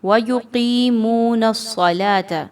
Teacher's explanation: زبان کی جڑ کو بمقابل نرم تالو کے ساتھ ملاتے ہوئے قاف کو ادا کریں گے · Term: نقطوں والی قاف